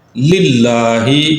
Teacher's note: یہاں پہ جو پہلا لام ہے اس کے نیچے زیر آ گئی ہے، تو اب جو دوسرا لام ہے اس کو باریک پڑھا جائے گا